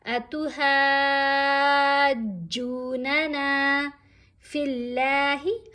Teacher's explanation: یہاں ہا کو ہم نے 5 الف جتنا لمبا پڑھا اور پھر جیم کو تھوڑا مضبوطی سے پڑھا · اب لام کو ہم نے باریک پڑھنا ہے، لام کو موٹا نہیں پڑھنا